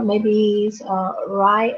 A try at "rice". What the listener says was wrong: Okay, maybe rice. Remember to pronounce the S.